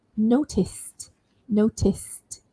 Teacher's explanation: So when I end it with ed, it's got to end with a t sound.